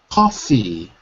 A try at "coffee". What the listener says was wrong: Yeah, you're dropping the E. Coffee.